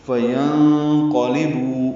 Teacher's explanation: نون ساکن کے بعد قوف آنے کی وجہ سے اخفا ہے